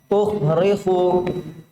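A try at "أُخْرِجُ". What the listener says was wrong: Salah itu, salah. Ju. Ukhriju bukan ukhrihu.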